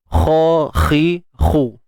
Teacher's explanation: Kalau kha itu sendiri untuk tebalkannya adalah dengan mengangkat pangkal lidah. Ya, dengan mengangkat pangkal lidah.